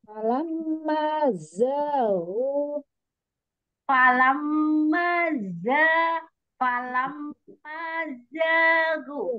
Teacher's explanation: Tekan lagi zainnya. Ada sifat sofit.